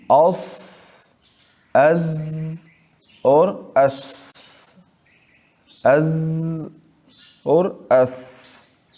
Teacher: صفیریہ مطلب اس صفت کا یہ ہے کہ ان کے ادا کے وقت ایک تیز آواز مثل سیٹی کے نکلتی ہے